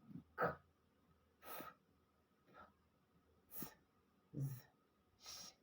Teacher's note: the speech sound is considered voiceless because there is no vibration on the vocal cords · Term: voiceless consonants